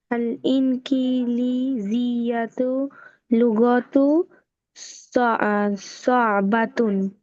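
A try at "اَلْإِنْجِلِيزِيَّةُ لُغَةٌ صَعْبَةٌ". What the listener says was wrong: লুগাতুর মধ্যে তানবিন হচ্ছে না কেন? তানবিন তো হবে। লুগাতুন সাবাতুন।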